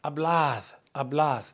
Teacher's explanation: Remember that D is kind of like a TH. It's not a blad.